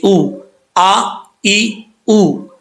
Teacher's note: یہ حمزہ کا ساؤنڈ ہے، حمزہ کی آواز ہے، سختی سے پڑھی جاتی ہے